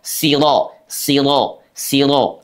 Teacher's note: makhrajnya ujung lidah kita dengan langit-langit. Sifatnya dengan suara menebal. Karena huruf roada fathah itu dia dibaca menebal. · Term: Tafkhimur ro